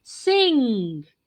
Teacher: you can feel the vibration in the nose when you say sing, when you say finger, when you say king. So this is the sound which in spelling we write ng. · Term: nasal sound